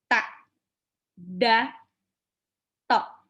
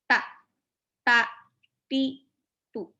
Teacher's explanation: Jadi ujung lidahnya itu seperti menyentuh belakangnya gigi seri atas. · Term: huruf ta-nya Arab